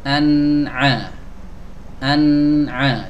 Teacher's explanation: Jadi sebelum masuk ke huruf ain, nunnya mengalir dulu sedikit. Nah, ini namanya tawassut atau bainiyah, suara yang dialirkan.